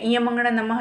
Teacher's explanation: मुख और नासिका दोनों की ध्वनि आ रही है। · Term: अनुनासिक